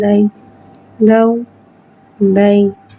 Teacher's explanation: یا ساکین ہے، یا ساکین سے پہلے زبر آ رہا ہے، یا لین ہو رہا ہے، یعنی اس لین کو بغیر کھینچے بغیر جھٹکا دیے نرمی سے معروف پڑھیں گے اور زبر کو منہ کھول کے ادا کر کے پڑھیں گے